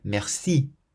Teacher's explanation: You always emphasize the last syllable or the final part of the word. So in the word merci, you'll hear that we stress the si part